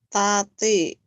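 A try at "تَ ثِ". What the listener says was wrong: Gak ada yang panjang. Tati, tati. Mm-mm, pendek. Tati, dadi, jangan dijawain, tati.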